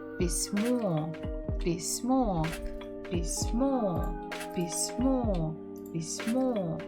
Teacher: The stress is on the final syllable.